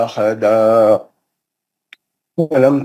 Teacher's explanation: احدا میں تنوین کا ادغام مع الغنہ حرف واو